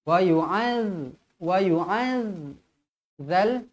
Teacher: tetap nipis jangan mentang-mentang tanda sabdu tebal tak nak W Wal lidah terkeluar sedikit jangan baca waz waz